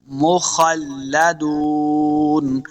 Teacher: ول دانم مخلدون، خا حروف مستعلیہ سے اس کو موٹا پڑھنا ہے. آگے لام مشدد ہے تو ہم نے خا کو لام کے ساتھ ملا کے پڑھنا ہے. مخلدون، دال پیش واو دو، واو مدہ ہے، اس کو دو حرکات لمع کریں گے، آخر پہ نون ساکن کرنا ہے.